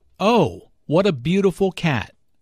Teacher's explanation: notice the emphasis on beautiful here